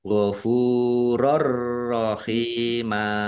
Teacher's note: thi'i dibaca panjang dua harakat fathah tanwin bertemu dengan huruf ro idgham Bila gunah masuk dengan tidak mendengung langsung masuk ke huruf ro tetapi tidak mendengung rnya dibaca dobel ditandai ada tasdidnya Ha hasrah